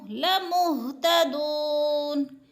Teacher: تدو پہ جو ہے وہ مدہ ہے، وہ ساکن سے پہلے دال کے اوپر پیش ہے تو وہ مدہ، یعنی ایک الف 2 حرکات کے برابر کھینچ کر پڑھنا ہے